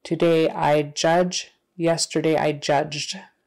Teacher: if the verb ends in a voiced sound like J, that ED sound is going to be voiced also, so the T becomes a D.